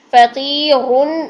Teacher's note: یہاں پر بھی را باریک پڑھی جائے گی. فقیرن، رن میں موٹی پڑھی جائے گی کیونکہ اس کے اوپر پیش تنوین ہے، لیکن جب ساکن کریں گے تو را ساکن سے پہلے یا ساکن ہے تو اس کو ہم باریک کر دیں گے.